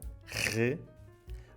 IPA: ʁ